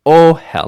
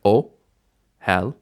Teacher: The second vowel, though, is going to be that vowel, the segol vowel, and that's the one that is going to be unstressed. Ohel, not ohel, but ohel, initial stress.